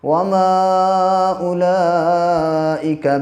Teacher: یہاں پہ مد منفصل ہے، کیونکہ حرف مد کے بعد حمزہ دوسرے کلمے میں ہے